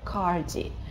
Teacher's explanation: Это такое длинное «а» с небольшим округлением.